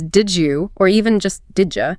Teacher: The deed sound at the end of deed and the y sound yeah at the beginning of you blend together. They assimilate to create a J sound. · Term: assimilation